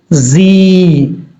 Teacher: یہ زا سیٹی کے ساتھ پڑھا جاتا ہے